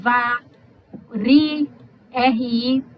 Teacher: esse R vibrante, R de caro, de barata, é o TEP